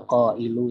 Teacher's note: Setelah itu ada qa'ilu, ini satu kalimat yang sama juga, ada qaf berharokat fathah matobi'i, harusnya dibaca dua harokat, namun bertemu dengan hamzah setelahnya, maka menjadi lima harokat, berhukum mad wajib mutasil.